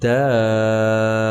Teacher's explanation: حروف مدہ کے بعد اگر کلمہ قرآنی میں تشدید ہو تو اسے مد لازم کلمی مثقل کہتے ہیں۔ اس کی مقدار 5 سے 6 الف کے برابر ہے